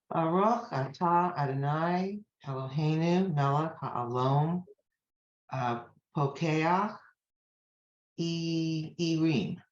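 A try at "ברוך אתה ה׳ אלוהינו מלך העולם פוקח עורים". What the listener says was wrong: Perfect. Thank you.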